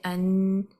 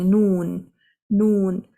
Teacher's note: the tip of the tongue is touching the upper gums and the letter noon can be pronounced